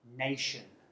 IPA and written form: ˈneɪʆən (nation)